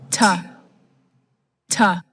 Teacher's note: The blade of the tongue touches the alveolar ridge /t/, /t/. The velum is up. There is no vibration.